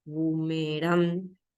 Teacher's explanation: boomerang es aguda. Carga la voz en la última.